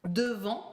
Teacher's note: Written with final T, you do not pronounce it. Again, it's a nasal sound.